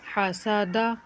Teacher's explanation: وقت کی صورت میں دال ساکن ہو رہی ہے اس لیے قلقلہ ہوگا